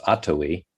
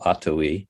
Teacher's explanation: And so the name that I came upon was an Abenaki word it's pronounced Atawi, accent on the first syllable, Atawi, and that means together in time and space.